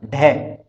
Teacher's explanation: ढ, इसका मूर्धा उच्चारण स्थान पहले के समान और स्पृष्ट संवार नाद घोष और महाप्राण